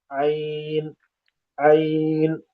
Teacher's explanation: बीच हलक से ऐन अदा होती है। ऐन ऐन तलबा इसमें ये गलती करते हैं कि ऐन की मश ना होने की वजह से ऐन की जगह हमजा निकल जाती है।